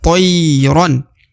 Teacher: toy diayun sekali atau dibaca 2 harokat. Tayran karena terdapat ya sukun ya.